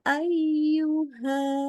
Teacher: jadi ya itu harus tengah lidahnya tuh betul-betul naik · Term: huruf ya